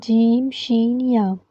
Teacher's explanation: جیم شین یا کا مخرج ہے کہ زبان کا درمیان اور اس کے مقابل تالو کے ملاپ سے ادا ہوتا ہے۔ تو آپ سمپل اس کو کہہ سکتے ہیں کہ زبان کا بیچ جب اوپر تالو کے بیچ سے لگے تو جیم شین یا ادا ہوگا۔